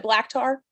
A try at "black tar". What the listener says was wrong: It sounds like you're saying lactar.